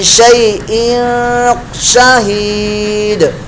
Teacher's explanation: اخفا کا گنہ ہو رہا ہے, تنوین کے بعد شین اخفا میں سے آگا, لہذا اخفا کا گنہ ہوگا.